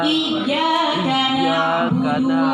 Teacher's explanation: Sifatnya kalau ain itu kan dia separuh mengalir nafasnya, jadi setengah tertahan, setengah mengalir.